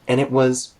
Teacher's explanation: I went there in high school with my family, and it was, here, and turns into an, and it connects to was by turning the T into a glottal stop.